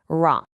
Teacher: You can really feel a strong vibration when you say it. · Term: trilled R